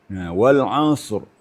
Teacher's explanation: Ain makhrajnya di tengah-tengah tenggorokan. Kemudian sad di mulut. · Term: makharijul huruf